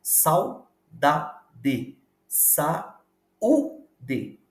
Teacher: na palavra saudade Sau não há separação de som na pronúncia você pronuncia de forma direta